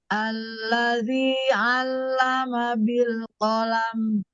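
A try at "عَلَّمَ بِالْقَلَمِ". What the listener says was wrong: Jangan ada hentakan hentakan dibuat ringan.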